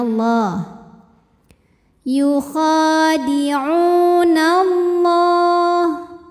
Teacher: dibunyikan secara tafkhim sebab huruf sebelumnya berbaris fathah, maka dibacanya tebal